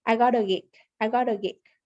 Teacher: american english when we have a t cell between two vowels it becomes a tap t sound which sounds similar to a d